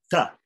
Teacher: the tongue touches the back of the teeth and makes and goes in complete contact, then pulls back and lets the air come out.